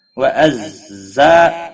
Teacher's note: کو تھوڑا سختی کے ساتھ پڑھا جاتا ہے تاکہ زال اور زا میں فرق ہو جائے